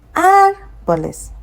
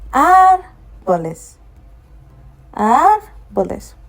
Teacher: we are still going to put the stress on the first syllable because that's the one that carries the accent. So it's not going to follow the first rule that says that when you see it ending with an S, you put the stress on the last but one.